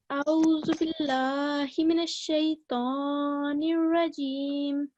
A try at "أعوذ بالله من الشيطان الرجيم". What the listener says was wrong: Okay, so you have differentiated between a and u, but you haven't differentiated between the sound. So the sound of alif and ain is different, right? So can you do that now? Differentiate.